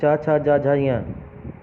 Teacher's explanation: जैसे क वर्ग वाले जो व्यंजन हैं, इन्हें बोलते समय आवाज़ कंठ से निकलती है, इसलिए इनको कंठ व्यंजन कहते हैं। च वर्ग वाले जो व्यंजन है ये जीभ तालू से लगती है, च, छ, ज, झ, य, ये तालव्य व्यंजन कहते हैं इनको।